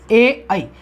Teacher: ए आई को कंठ तालव्य ध्वनियां कहा जाता है। कंठ तालु इसका उच्चारण स्थान है।